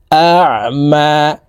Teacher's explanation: আইন হরফকে হলকের মধ্যখান থেকে চাপ দিয়ে উচ্চারণ করতে হবে, কারণ আইনের মখরাজ হলকের মধ্যখান থেকে হবে।